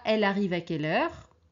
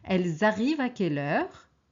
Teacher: Alors, c'est possible de dire « elle arrive à quelle heure ?» mais si on parle d'une seule personne. Si on parle de plusieurs personnes, on doit faire la liaison pour que ça se comprenne.